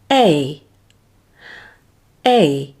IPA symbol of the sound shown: eɪ